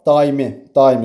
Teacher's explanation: Vurğu da daimi, daimi sonuncu hecadadır.